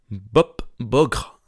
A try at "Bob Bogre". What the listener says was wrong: Non, Bogre. Ouais, c'est vraiment Bogre. T'as tendance à dire Bob Borgre. T'as tendance à dire.